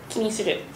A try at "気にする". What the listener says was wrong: ち ょ っ と ア ク セ ン ト あ れ か な 。 気 に す る 。 気 に す る 。 気 に す る 。 気 に す る 。